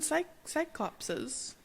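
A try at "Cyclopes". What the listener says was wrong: But yeah, you're adding an extra S.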